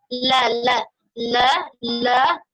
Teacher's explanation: Kalau ujung lidahnya saja yang kita sentuhkan ke langit-langit itu dia jadi la, jadi tebal dia.